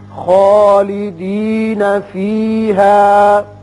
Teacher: خا مفخم کر کے پڑھتے ہیں، پر کر کے. فیہا یہاں وقف مطلق ہے، آپ وقف کر سکتے ہیں، لیکن یہاں ایک قاعدہ یاد رکھیے کہ اگر آپ ملانا چاہیں تو پھر ہا کے اوپر مد آ جائے گا، مد منفصل.